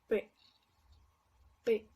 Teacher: Este fonema es muy parecido al pasado, pero para esto vamos a aplicar un poquito más de fuerza al juntar los labios P, P, y el aire va a salir un poco más de golpe para que se escuche un poquito más fuerte, más como una explosión